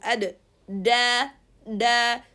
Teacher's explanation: dal is the tip of the tongue touching the elevated area of the gums. There is no need to push air, as we are going to see, so it's characterized by openness.